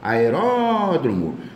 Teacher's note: Aeródromo, a sílaba tônica é a antepenúltima.